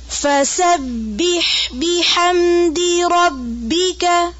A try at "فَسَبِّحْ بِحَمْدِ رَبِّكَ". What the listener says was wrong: بے کی ساؤنڈ نہیں آنی چاہیے. بی